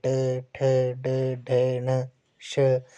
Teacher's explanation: मूर्धन्य यानी कि तालू के मूर्धा भाग से जैसे ट, ठ, ड, ढ, न, श तो ये आपके मूर्धन्य है। ये इन व्यंजनों का उच्चारण करते समय जो है वो जीभ जो है वो हमारे मूर्धा को जो है वो टच कर रही है